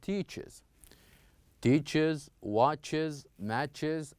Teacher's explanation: we didn't pronounce it as a s sound but we pronounce it as z sound